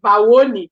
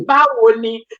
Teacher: So I tell them every time they speak in Yoruba, they should go down. The diphthongs go down. It doesn't go up.